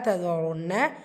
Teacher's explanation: சதருன்ன ரா தும்மா பெற்று வந்திருக்கு, வலினப்படுத்தி ஓதணும். நூன் முஷத்ததா குன்னா செஞ்சு ஓதணும்